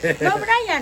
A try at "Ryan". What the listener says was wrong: No B, no B.